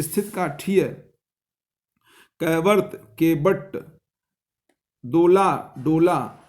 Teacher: दंत का मूर्धन्य हो जाना प्राकृत की एक खास विशेषता